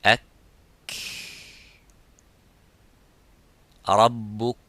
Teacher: But the kaf, there is some air coming. It doesn't stop slightly, but it makes that rakhawa, it makes the, it makes that hams in the kaf.